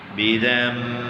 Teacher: بی نون زال نون فتح زن بزن با کسرہ بی، لیکن با کی وجہ سے نون کو میم سے بدل دیا گیا ہے تو پڑھیں گے بزم با کسرہ بی زال میم فتح زم